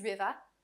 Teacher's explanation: As you may have been hearing during my speech in this video, and even now, You can hear me say every R clearly. However, if I speak with a New York, Boston, or British accent, you might hear that my R's disappear in the middle or end of words